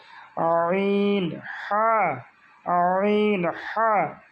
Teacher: চাপ দিয়ে গলায় টিপে ধরলে যেরকম শব্দ হয়, যে আমরা শব্দ করতে চাই কিন্তু বের হচ্ছে না, ঠিক ওইভাবে চেপে উচ্চারণ করতে হবে।